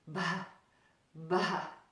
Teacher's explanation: pronounced with a little bit of air expulsion after the buh sound